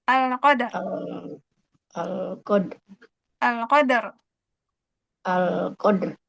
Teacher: Kalau alqadr boleh karena dalnya huruf qalqalah memang mantul.